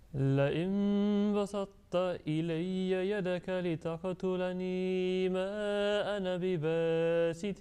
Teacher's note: Yes, you are saying ta with the shadda on that one, but when you are joining together, then there is a tinge and trace of thickness of ta must remain there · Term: incomplete merging